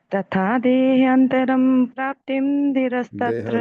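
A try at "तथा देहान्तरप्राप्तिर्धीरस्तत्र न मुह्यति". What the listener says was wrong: देहांतरम नहीं होता जी, देहांतर प्राप्त।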